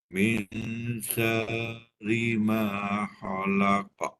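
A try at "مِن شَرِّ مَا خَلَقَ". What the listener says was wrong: Haji kena matikan roll tu. Syar.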